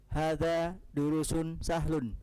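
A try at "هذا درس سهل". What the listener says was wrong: Nah, kalau antum bilang durus, berarti setelah ra ada waw. Panjang jadi ya, durus. Ada waw tidak setelah ra? Durusun itu kalau setelah ra ada wawunya. Nah, berarti bukan durus.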